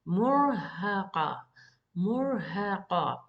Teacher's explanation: Mur with the ra heavy, then murha, ha is light, murhaqa. Qa, make the qa heavy.